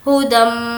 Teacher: कुछ देर नाक में आवाज़ को भी रोकेंगे क्योंकि मीम पर तशदीद है। हुदम मिर रब्बिहिम मिर, अब यहाँ पर हमें मीम को रॉ से मिलाना है क्योंकि रॉ पर तशदीद है और जिस भी हर्फ पर तशदीद होती है तो उसको हमें पहले वाले से मिलाना होता है।